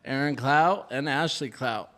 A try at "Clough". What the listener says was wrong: Clough. And there's no T.